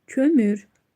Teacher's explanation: Kömür ö ü incədir və dodaqlanan saitdir.